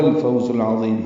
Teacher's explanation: عین حروف قمری میں سے ہے اور یہ حروف حلقی میں سے بھی ہے، حلق سے ادا ہوگا، وسط حلق سے · زا کو تیز صفیر کی آواز سے ادا کرتے ہوئے لام سے ملائیں گے